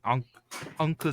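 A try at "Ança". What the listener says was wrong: Pronounced like an S. I just remember because it makes it look a little like an S that you really fucked up.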